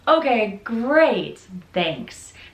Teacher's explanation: has a downward intonation, and that is confirmation that the conversation is ending.